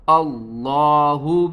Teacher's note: لفظ اللہ سے پہلے زبر ہے تو ہم لفظ اللہ کو موٹا کر کے پڑھیں گے